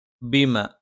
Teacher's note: ബ രണ്ട് ചുണ്ടിൽ നിന്നാണ്. പക്ഷെ മേലെ ചുണ്ട് അല്പം പുറത്തേക്കും താഴെ ചുണ്ട് അല്പം ഉള്ളിലേക്കും ചേർന്ന് നിൽക്കും